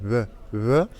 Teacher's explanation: En espagnol, c'est V. V, c'est un peu comme un B, sauf qu'on ne ferme pas complètement les lèvres, on laisse l'air passer quand même.